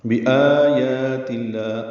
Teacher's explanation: آ مد بدل ہے، یا پر کھڑا زبر، قائم مقام مد اصلی ہے، تا کی زیر کی وجہ سے لام اسم جلالہ باریک پڑھا جائے گا